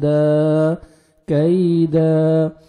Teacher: جب سٹاپ کریں گے تو دو زبر کو ایک زبر لگا کے سٹاپ کریں گے، دال زبر الف ہو جائے گا، دا کیدا. انہم یکیدون کیدا.